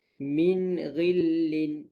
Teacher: nun mati bertemu dengan ghin, jangan dengung